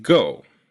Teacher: vowel is very similar to American english's o as in go the issue with the vowel in go is that it's actually two vowels you start at o the vowel you want but then go